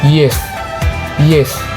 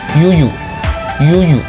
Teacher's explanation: bagian depan lidah mendekati langit-langit dan aliran suara tanpa gesekan